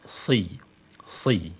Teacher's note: huruf shad ini memiliki sifat itbaq, ya, memiliki sifat itbaq, dia tebal, kemudian isti'la